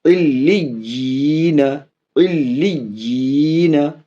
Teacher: اور یہاں یا کے ساتھ مدہ ہے، یہ الگ سے ہے، اس یا کو پھر اگلی یا کے ساتھ الگ کھینچیں گے، مدہ بنائیں گے